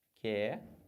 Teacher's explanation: quando eu faço a transcrição fonética, esse QU, o U não tem som? Então acaba que eu fico com duas letras e um som só.